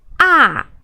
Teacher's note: And the fourth tone is Ah, just go down straight. Ah, like you figured out how to solve the mystery problem.